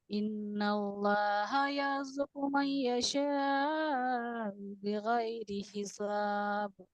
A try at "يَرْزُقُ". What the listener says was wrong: یرزقو میں را تو سمجھ میں ہی نہیں آ رہا آپ کا.